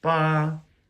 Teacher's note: it is a flat high pitch tone